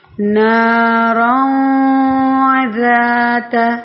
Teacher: ناک میں آواز کو چھپا کر پڑھیں گے، غنہ کریں گے